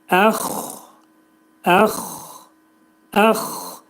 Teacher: Xa hərfini tələffüz edərkən boğazın yuxarı hissəsindən bu hərfin məxrəci çıxarılır.